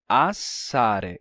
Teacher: o S é de fato duplo, assare. Ele dura mais tempo. Como resultado, ele tem força suficiente para resistir à pressão das duas vogais que estão, né, antes e depois.